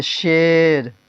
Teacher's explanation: یا مجہول جو کھینچ کر نہ پڑھی جائے. جو کھینچ کر نہ پڑھی جائے جیسے شیر.